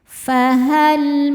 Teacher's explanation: Lam sukun disebut lam mutlak. Ada lam sukun yang tidak menghadapi lam atau ro. Maka lam dibaca jelas.